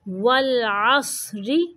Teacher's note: اگر یہاں پہ وقف کرنا ہے تو را کو ساکن کرتے ہوئے تھوڑی اس کی آواز کو موٹا رکھنا ہے